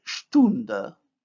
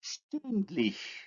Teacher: When we add the suffix which contains the front vowel, the stem vowel becomes also front.